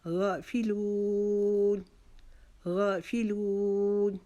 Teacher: غین کے اوپر جو کھڑا مد ہے، کھڑا زبر ہے، اس کے لیے ہم اس کو ایک الف جتنا کھینچیں گے. غا فی کو جلدی سے ادا کر لیں گے.